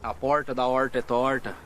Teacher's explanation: Este é o R retroflexo, o popular R caipira.